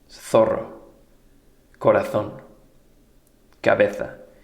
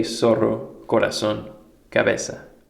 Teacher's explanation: In many parts of Spain, it sounds like the TH in thin, but in the rest of the Spanish-speaking world, it just sounds like the English S.